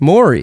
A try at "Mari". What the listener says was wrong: There's no O in it. It's Mari. Mari Povich.